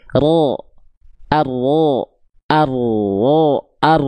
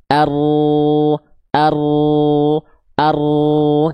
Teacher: huruf ra dilafalkan tepat dari bagian punggung lidah ya, bukan ujung lidahnya banget tapi punggung lidahnya.